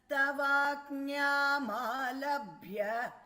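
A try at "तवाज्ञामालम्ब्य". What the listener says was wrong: Tavajñamalambhya, not alabhya. There is no bha there.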